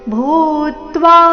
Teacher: ಭೂ ಮಹಾಪ್ರಾಣ ದೀರ್ಘ ಅದರ ಮೇಲೆ ಆಘಾತ